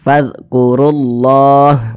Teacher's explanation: kemudian berposisi di tengah bacaanah pasti dia dibaca tebal seperti itu ketika mengucapkannya pangkal lisan kita itu naik terangkat ke atas